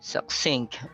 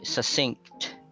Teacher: So you can pronounce the first C as a K, succinct, or you can ignore it like succinct. They are both acceptable.